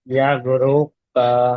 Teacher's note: র সাকিনের ডান দিকে পেশ এসেছে, তাই রকে পুর করে পড়তে হবে। পাশের উপরে যাবার আছে, যাবারটা হলো হারাকার, হারাকারকে টান না দিয়ে তাড়াতাড়ি।